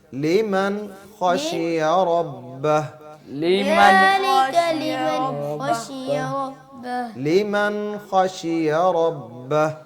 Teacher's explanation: لمن جو ہے یہاں پہ غنہ نہیں کرنا